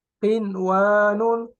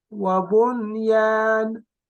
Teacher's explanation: The Nun Sakina is not merged into the wow or ya when they meet in one word